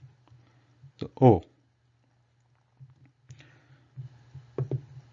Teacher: the tongue retains the natural relaxed position and the lips are making a small circle